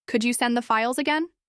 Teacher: With a gentle rise at the end